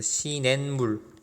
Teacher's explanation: 이 디귿은 다시 미음의 영향을 받아서 니은으로 바뀌겠죠. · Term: 비음 동화